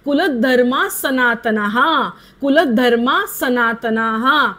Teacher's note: तो पुढचा विसर्ग बोलायचा नाही कारण पुढे स आहे